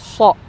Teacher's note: SH itu ada sirofirnya nya desisannya gitu SH gitu dan ee apa terangkat ya ketika menyebutkan SH gitu